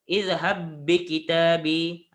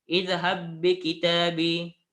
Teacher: Hanya sebut satu sahaja ba berserta tasydidkan huruf yang kedua tu. Ba yang kedua. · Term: idgham mutamatsilain